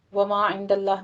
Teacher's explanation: वमा इंदल्लाह में भी आगे थोड़ा सा चेंज है कि अल्लाह लफ्ज़ जलाला से पीछे फतह आ रही है तो यहाँ पे लफ्ज़ जलाला को पुर पढ़ेंगे।